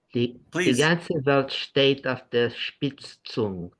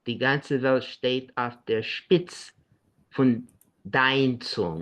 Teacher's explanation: There is a kind of encliticization, a shortening, and an elision.